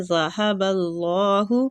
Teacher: ہا سینے والی سائڈ سے نکلے گا یہ والا ہا جو ہے